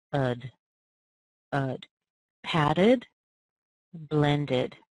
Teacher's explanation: you actually add an extra syllable on, and you hear the vowel sound, which in most cases is a schwa